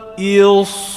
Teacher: سیٹی آ رہی ہے موٹی موٹی سیٹی.